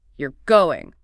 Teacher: My voice goes up sharply right at the end.